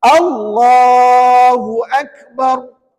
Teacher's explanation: alif lam jalalah tebal maknanya sebutan lam Tu kan tebal